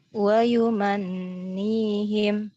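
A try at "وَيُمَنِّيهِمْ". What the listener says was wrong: Nah, kurang. Ya, kalau Ana ditahannya agak lama ya. Wa yumannihim. Jadi untuk dengungnya pun harus sama ya. Kalau kita lama, misalkan kita talaki dengan ustadz ataupun syekh yang dengungnya lama tadi. Wa yumannihim. Kan kita harus ngikuti.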